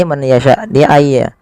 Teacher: Ya, ketiga-tiganya dibaca dengan sama, yaitu memasukkan nunnya kepada huruf ya, dan hukumnya yaitu idgham bi gunnah